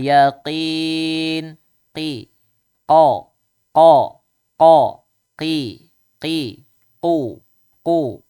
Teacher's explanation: Dari lidah pangkal nempel ke langit-langit yang lembek, yang lunak ya.